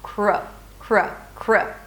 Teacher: So, you start with a 'k' sound, and 'r' - 'kr'. Round your lips a little bit. And then a schwa